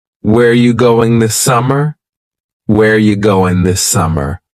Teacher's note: Where ya, which is you, going, dropping the G.